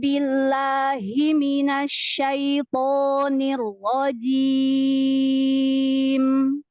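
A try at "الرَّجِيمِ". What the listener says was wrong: Nah, ar-rajim itu udah jimnya jelas, Masya Allah, bagus. Tapi kasrohnya turunkan bibir bawah aja sampai gigi seri kelihatan. Jadi nggak senyum, tapi gigi seri bawah kelihatan nggak apa-apa.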